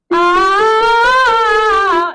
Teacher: If I do ah, it's very, very open. Like I can maybe get away with it, but it's too brassy, too forward, almost too aggressive, and my larynx tends to want to go up, which changes my sound. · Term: German sounding ah